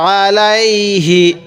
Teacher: আমি আইনটা একটু চাপ দিয়ে পড়ছি হামজা পড়ি নাই